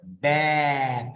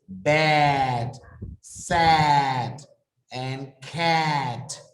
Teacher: the tongue is low as well as the jaw, like in the word bad. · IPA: æ